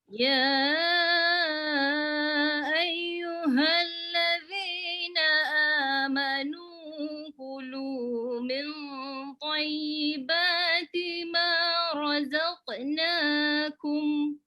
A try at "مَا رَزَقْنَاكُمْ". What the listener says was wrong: Cuba heretkan sikit qaf tu. Ma razaqnakum. Razaqna.